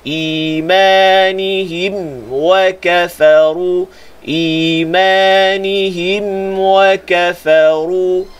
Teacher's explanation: Mim sakinah bertemu waw, izhar syafawi. Bila mim sakinah bertemu waw, ketak bibir betul-betul supaya tak jadi ikhfa.